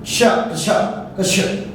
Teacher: आपके मूर्धा से आपकी जीवा टकरा रही है, और मूर्धा से आगे में छ, स जैसा भी आ रहा है, श, श, मतलब मूर्धा वाला एक स था आपका, कौन सा, ये वाला स था।